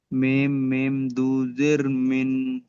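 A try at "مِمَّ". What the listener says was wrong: মিন হবে না মিম মিম দুজের মিন বলেছিলাম কিন্তু এখানে মিম মিম এর সাথে যুক্ত হচ্ছে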